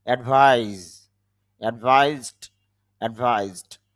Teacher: উপদেশ দেওয়া অর্থ যদি হয় ভার্ব হিসাবে, তখন অ্যাডভাইস শেষে জ সাউন্ড হয়, আর নাউন হিসাবে যখন হয় তখন স সাউন্ড হয়, এটা যেহেতু ভার্ব, এখানে সবগুলো যেহেতু ভার্ব, এই জন্য অ্যাডভাইজ জ সাউন্ড হবে।